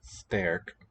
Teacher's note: the clusters with S in Dutch don't palatalize, or don't retroflex like German does.